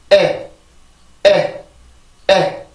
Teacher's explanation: 그래서 에 이런 식으로 소리가 만들어지고 입 안의 변화를 살펴보면 혀 끝은 아래 치조 뒤에 가 있고 혀 중간은 이렇게 그 경구개 쪽으로 조금 떠 있어요. 붙지는 않고 살짝 떠 있는 상태에서 그 입 모양을 갖춰야지 내가 이 에라고 하는 정확한 소리를 만들어 줄 수가 있었죠.